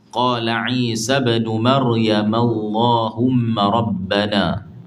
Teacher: lam pada lafzul jalalah dibaca dua harakat serta tafkhim tebal bila didahului oleh baris fathah atau dhammah